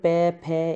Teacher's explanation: है और ओस्ट का मतलब होट होता है कि प फ इनमें जो हमारे होठ है वो दोनों टच होते हैं आपस में